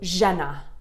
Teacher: It's kind of a soft je. There's no rolling, it's just je. It's like velvet.